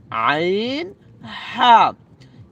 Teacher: কোত্থেকে উচ্চারণ হবে, হলকের মধ্যখান হতে, হলকের মধ্যখান হইতে আইন হা।